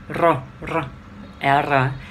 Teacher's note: cứ rung rung rung rinh ở đầu lưỡi